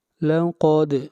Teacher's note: دال کے اوپر قلقلہ اور قاف کو موٹا پڑھا جائے گا، قاف حروف مستعلیہ میں سے ہے۔